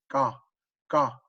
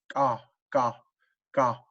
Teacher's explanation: you kind of say that by like clicking the tongue off the back of your mouth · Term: half K, half G